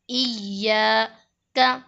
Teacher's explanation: کیونکہ الف مدہ ہے، الف سے پہلے زبر ہے، اس لیے الف مدہ ہوگا۔ الف مدہ کو ایک الف کے برابر کھینچ کر پڑھیں گے